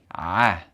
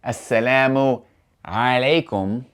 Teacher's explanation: the letter Ain, it sounds like an ah sound coming from the throat